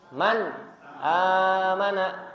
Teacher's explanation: huruf alif yni Man amana maka mannya harus jelas Man amana jadi nunnya harus dizahirkan atau dijelaskan